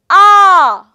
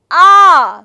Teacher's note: stricture for example if I say ah if I say ah there is no stricture while that air flows from my esophagus and travels through my mouth and there is no stricture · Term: Vow sounds